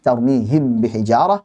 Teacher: Apakah mimnya jelas tanpa gunnah yang dipanjangkan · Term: izhar